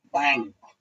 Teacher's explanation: बैंक में भी अंगा की ही ध्वनि आती है, तब वो सही उच्चारण होता है